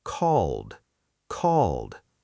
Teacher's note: Notice that called ends with a soft D sound, not ed like a separate syllable.